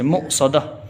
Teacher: جھٹکے سے پڑھا جائے گا حمزہ کی وجہ سے